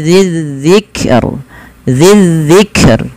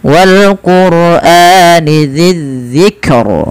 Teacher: Dan rnya dibaca dengan tipis